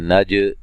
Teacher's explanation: जीम पे क़लक़ला करेंगे